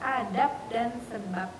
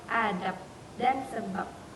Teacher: Karena konsonan hambatan letuk bersuara B tidak mungkin terjadi pada posisi koda. Ketika dinetralisasikan menjadi hambatan tidak bersuara yaitu P.